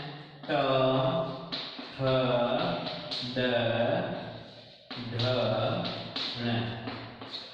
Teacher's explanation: इन सब का उच्चारण स्थान होता है मूर्धा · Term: मूर्धन्य वर्ण